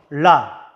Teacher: 혀끝이 윗잇몸에 닿았다가 떨어지죠?